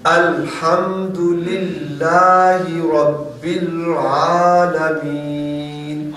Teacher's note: رب میں جو را ہے اس کو پر کریں گے کیونکہ را پر زبر ہے